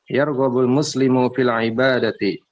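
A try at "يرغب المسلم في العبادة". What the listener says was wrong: Naam, sahih.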